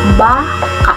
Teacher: Kapag ang diin ay nasa pantig ba, ang ibig sabihin nito ay isang uri ng hayop